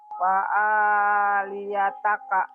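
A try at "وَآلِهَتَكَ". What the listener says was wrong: Liha bukan wa alia, wa alihataka.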